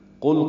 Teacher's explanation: قل قوف پر ہے اور لام ساکن ہے، قوف کو موٹا پڑھنا ہے، لام پہ اظہار ہے